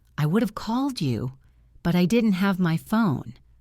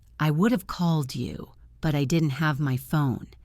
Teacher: the words would have blend together to sound like would of · the word phone is higher in pitch because it is the most important information